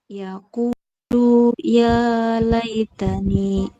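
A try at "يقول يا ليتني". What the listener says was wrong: Masih dibaca panjang lunya tadi. Ulang lagi.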